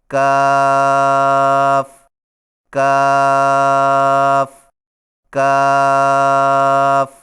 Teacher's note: کاف کی ادائیگی میں زبان کی جڑ کو کوے کے قریب تالو پر لگا کر باریک آواز میں پڑھیں